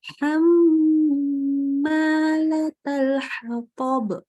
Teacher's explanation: sempurna gunnahnya mengalir lewat hidung. Ciri-ciri sempurna dan tidak adalah ketika baca pencet hidungnya.